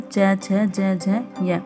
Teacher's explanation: छ ध्वनि का उच्चारण स्थान? आंसर है तालव्य, ये च वर्ग में आता है, च छ ज झ य।